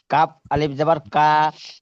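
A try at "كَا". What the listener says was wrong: জি, মাশাল্লাহ।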